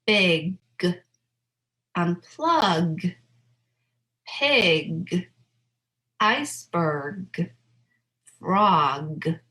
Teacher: Let's go on to the /G/ sound so /G/ is voiced